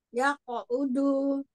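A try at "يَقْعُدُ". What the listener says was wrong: Tebalkan kofnya. U. Ya qa'udu.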